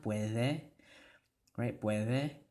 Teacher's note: notice how in spanish that d here makes a th sound